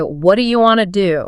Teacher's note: You hear how that T in what transforms into a soft D sound or a flap T.